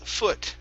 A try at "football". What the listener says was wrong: instead of an u sound instead of foo it's fu foot football